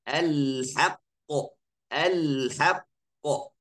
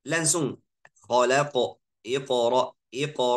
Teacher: semuanya pasti sudah terasa kalau suara saya hilang sedikit sebelum keluarkan qo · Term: qalqalah